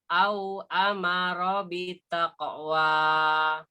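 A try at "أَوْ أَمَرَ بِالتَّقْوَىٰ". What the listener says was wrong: Tasdid. Au amara bittaqwa. Hati-hati yang ada tasdid. Au amara tasdid.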